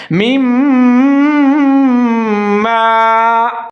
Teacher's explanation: غنہ کریں گے، 3 سے 4 سیکنڈ تک آواز کو ناک میں لے جائیں گے